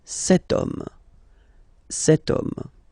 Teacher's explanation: as in French, H is not pronounced, so the first sound that we hear is O